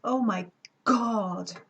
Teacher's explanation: So, for example, that will be a case where you would be using these lengthened diacritics to show that the ga sound is longer in its hold phase